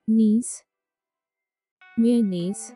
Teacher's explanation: stress is on knees